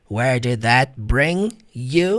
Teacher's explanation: Você vai ignorar esse G aqui, ó. Na transcrição fonética, o som do G nem existe.